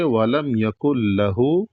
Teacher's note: تو اس کا جواب یہ ہے کہ غنہ اس لیے نہیں کریں گے کیونکہ نون میں غنہ اس وقت ہوتا ہے جب نون کو پڑھا جاتا ہے۔ اب یہاں پر جب ڈائریکٹ کاف کو لام میں ملا دیا گیا ہے تو نون پڑھا ہی نہیں گیا ہے، اس لیے یہاں پر غنہ نہیں کریں گے۔